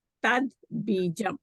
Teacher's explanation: If ta is followed by a soft consonant, then again ta will change into a da. Tat bijam. Ba is a soft consonant, so ta becomes a da.